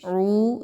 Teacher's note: اعوذ عین واو پیش، عو دو الف کے برابر، اس کو لمبا کر کے پڑھیں گے